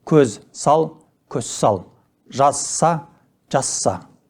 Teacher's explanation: Түбірдің соңғы з дыбысы с дыбысының алдынан келсе, з дыбысы өзгеріп, с дыбысына айналады. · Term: Регрессивті ассимиляция